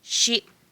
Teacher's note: Now, you would think that we would say si. Si is not a sound that exists in Japanese. Instead, we would say shi.